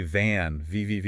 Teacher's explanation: Try putting your fingers on your throat when you say van, V-V-V. You should feel a buzz. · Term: Voiced